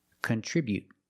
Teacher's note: With a t at the end after the vowel, you can use a stop t.